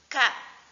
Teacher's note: Pangkal lidah menyentuh langit-langit belakang.